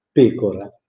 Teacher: In italiano pecora è una parola sdrucciola, non è piana.